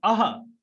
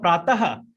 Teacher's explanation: जो विसर्ग है उसको हम उच्चारित करते हैं तो हमको हल्का हल्का ह जैसे सुनाई देता है।